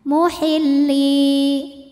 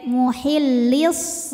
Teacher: Kalau wasol atau kita menyambungkan bacaan ke kalimat berikutnya, lamnya ini pendek, muhillis. Jadi gugur madnya, dinamakan dengan takholus bil hadfi.